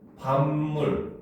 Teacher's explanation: 종성과 초성이 둘 다 미음 미음으로 똑같잖아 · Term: 완전동화, 완전 동화